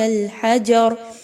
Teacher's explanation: حجر میں را موٹی کر کے پڑھی جائے گی کیونکہ را پر زبر ہے۔ وقف کی صورت میں جب اس پر جزم لگے گی تو اس سے پہلے والے حرف پر بھی زبر ہے، اس لیے اس کو پر پڑھا جائے گا۔